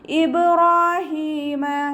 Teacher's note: ബ കൽക്കല ലെറ്റർ ആയതുകൊണ്ട് ഫുൾ സുക്കൂന് കൊടുക്കുക. ഇബ് ബ സുക്കൂനിൻ്റെ സൗണ്ടിനെ വ്യക്തമായിട്ട് കേൾപ്പിക്കുക